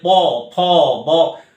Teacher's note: প, ফ এই উচ্চারণ করার সময় ওষ্ঠ দুটো পরস্পরকে স্পর্শ করছে, বা অ্যাকচুয়ালি ঠোঁট দুটো পরস্পরকে স্পর্শ করছে, তার জন্য স্পর্শবর্ণ বলা হচ্ছে।